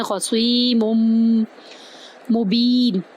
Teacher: یہاں پر ہم میم کو میم کے اندر داخل کر رہے ہیں دو پیش کے ساتھ اور غنہ بھی کر رہے ہیں